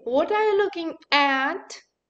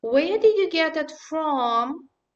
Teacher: Again, you see the stressed form at, for, and from.